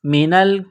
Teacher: میم زیر می نون لام زبر نل، نون کو لام کے ساتھ پلس کرنا ہے.